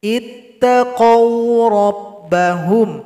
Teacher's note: Ittaqaw rabbahum, bukan ittaqaw. Itu salah, tidak boleh dibaca dengan mad, tidak boleh panjang, satu ketukan saja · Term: sifat lin